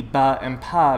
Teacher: And that's because if you look at the underlying features of these phonemes, you see that B and P, ba and pa, both share particular features at the phonetic level. They're both bilabial sounds made with your lips, and they're both stops. They stop the flow of air coming out of your mouth, as opposed to H, which doesn't have either of those phonetic characteristics, right?